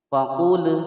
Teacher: Faqul ada lam berharokat sukun, dibaca jelas, tidak boleh dipantulkan. Faqul, nah itu tidak boleh.